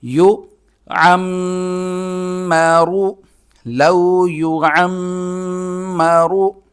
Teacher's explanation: عین کو حلق سے نکالنا ہے